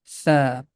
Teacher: We can represent this sound with TH. The tip of tongue is touching with the edges of frontal teeth,